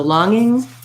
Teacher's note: basically there's no g sound well there's no n sound either it's an ng sound